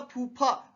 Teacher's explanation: अगर अपन ने बोला फूफा तो पूरी हवा बाहर निकलती है ना, तो ये यही है ओष्ठ।